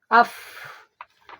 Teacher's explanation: Af itu juga sama jig gata sifat jahar jeung hamasnya. Setelah diucapkan itu suara mah tertahan tapi napas mah ngalir. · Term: hames